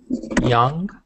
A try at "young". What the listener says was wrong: So you said jong. You said it like a J.